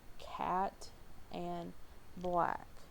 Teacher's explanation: the ash, and that's a low, front, unrounded, lax vowel